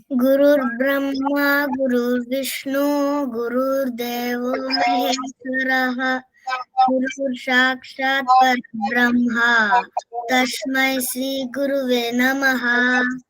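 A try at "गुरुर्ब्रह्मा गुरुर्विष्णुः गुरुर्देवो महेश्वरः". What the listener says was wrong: Fantastic.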